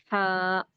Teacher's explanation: تو سب سے پہلے ہا، اس کو اس طرح سے لکھا جاتا ہے، اس کے اوپر کوئی نقطہ نہیں ہوتا اور اسے بڑی ہا بھی کہتے ہیں۔ اس کا مخرج ہے حلق کا درمیانی حصہ، یعنی کہ یہ حلق کے درمیانی حصے سے نکلتا۔